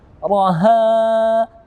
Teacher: Begitu juga dengan raha, ha fathah bertemu dengan alif, dua harokat kita membacanya sebagai mad tabi'i